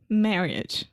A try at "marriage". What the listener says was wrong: Okay, so I think you're saying marriage. So the I directly after the two R's, we don't really pronounce that. So marriage.